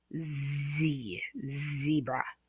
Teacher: The Z sound is a voiced. You can feel the vibration. The vocal cords are intact and they're being used